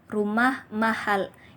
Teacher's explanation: setiap kalimat berita diakhiri dengan pola intonasi 2 31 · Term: pola intonasi berita